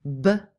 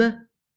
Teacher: So p, b, and m are homorganic sounds. But the only difference between b and m is that for m, some of the air is coming out through your nose